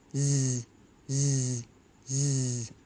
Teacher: Zed is an even and smooth voiced sound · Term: z sound